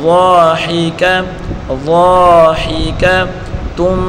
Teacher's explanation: اس کو ایک الف کی مقدار کھینچ کر پڑھیں گے. ہا کے نیچے پڑھی حرکت ہے اور کاف کے اوپر بھی پڑھی حرکت ہے. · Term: مدہ